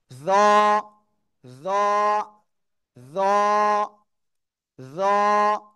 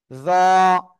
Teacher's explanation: জিহ্বার আগা সামনের উপরের দুই দাঁতের আগার সাথে লাগিয়ে মোটা আওয়াজে একালিপ টেনে উচ্চারণ করতে হবে।